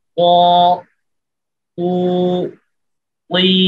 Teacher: এরপর এর আরেকটা সিফাত হচ্ছে ইস্তিআলা, অর্থাৎ জিহ্বার গোড়া এবং আওয়াজের গতিটা উপরের দিকে থাকবে, তালু উপরের দিকে, উপরের তালুর দিকে থাকবে, জিহ্বার গোড়া এবং আওয়াজের গতি উপরের তালুর দিকে তুলে হরফ থেকে মোটা করতে হবে। জিহ্বার মধ্যখান উপরের তালুর সাথে লেগে থাকবে এবং সাকিন অবস্থায় কলকলা করে এই হরফটিকে উচ্চারণ করতে হবে।